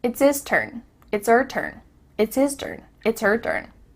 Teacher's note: The H at the beginning of his and her is cut off.